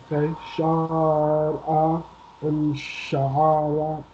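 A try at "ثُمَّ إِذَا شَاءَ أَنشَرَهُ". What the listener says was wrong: No. This sheen is long. Summa iza sha'a anshara.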